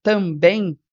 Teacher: ele é um ditongo decrescente e ele é nasal